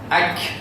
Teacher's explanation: kalau kaf dia ka, dia mesti hamas